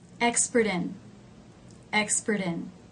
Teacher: when the T gets changed to a D sound it does smooth out the line somewhat